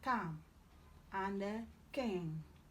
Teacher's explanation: K, velar plosive, as in calm, and king.